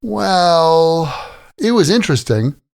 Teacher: It often has a slight falling tone and a short pause, like, well, pause, then answer.